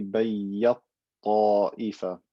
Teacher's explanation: merging the ta completely into the ta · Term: idgham kabir